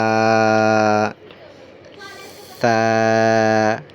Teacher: এটা হবে জিহ্বার আগা আর উপরের দুই দাঁতের আগার সঙ্গে লাগাইয়া